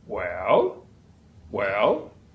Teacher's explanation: in the affected the British English they will say well well that's a typically a falling Rising tone that's the third tone in mandering